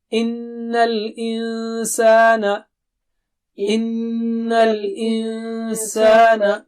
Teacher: ای ان اور نون پر غنہ ہوگا, اور انسان وہاں نون کو چھپائیں گے آپ, وہاں بھی غنہ ہوگا